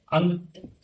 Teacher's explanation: अंग जो है नासिका से बोलेंगे हम लोग